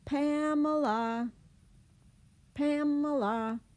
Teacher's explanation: The Pam part is the longer part, and the other two syllables are schwad.